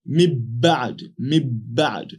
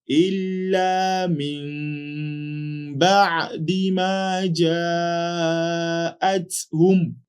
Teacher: we change the Nuun Saakinah into a subtle meme while still observing gunna. So we say إلا من بعد ما جاءتهم.